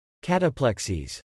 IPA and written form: ˈkæt əˌplɛk siz (Cataplexies)